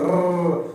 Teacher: लुंठित व्यंजन समझेंगे, जीभ प्लस तालु से लुढ़ककर बनते हैं। जीभ ये हमारी, और अंदर जो तालु छोटा सा, उसमें जो लुढ़काव होता है, उसी से जो बनता है वो क्या बनता है, लुंठित व्यंजन होता है।